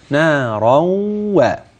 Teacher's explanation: طيب نارا عند الوقف ليس فيها غنة، أما إذا وصلنا كلمة نارا بما بعدها أصبح معي تنوين بعده واو في غنة